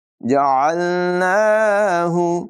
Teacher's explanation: आइन की आवाज़ हलक के दरमियान वाले हिस्से से निकालेंगे, यहाँ खड़ी हरकत है, इसे भी हुरूफ़ मद्दा की तरह लंबा करके पढ़ेंगे।